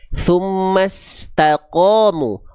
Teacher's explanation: huruf qaf ketika berharokat fathah kan dibaca qa, tapi ko terdengar seperti vokal O.